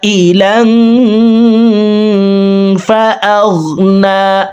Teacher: পর ইকফার 15টি হরফের ভিতরে একটি হরফ ফা আসছে এই কারণে এই তানউইন ওয়ালা লামটি অর্থাৎ দুই জবর ওয়ালা লামটি নাকের ভিতরে লুকাইয়া গুন্নার সহিত পড়ব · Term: ইকফা গুন্না